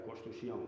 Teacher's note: Se van reduciendo y la NS se convierte en S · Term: reducción de los grupos consonánticos